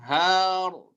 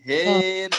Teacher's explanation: Kalau Hafs kan har tebal gitu, ini hair tipis